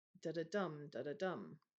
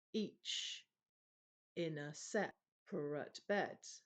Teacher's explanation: It's two unstressed and a stressed.